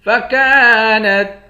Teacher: فكانت کاف کے بعد الف ہے، ایک الف کے مقدار کھینچ کر پڑھیں گے۔